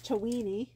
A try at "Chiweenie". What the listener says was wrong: Chiweenie, not a Chiweewee. You said a Chiweewee.